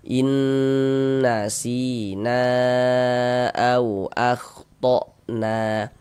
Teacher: Karena di sini ada alif, sebelumnya ada harokat fathah nih. Sehingga huruf yang memiliki harokat fathah dibaca panjang, sehingga na dibaca panjang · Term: mad jaiz munfasil